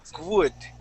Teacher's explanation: when you said this word, your W sounded a little bit like a G. Okay, you had said would.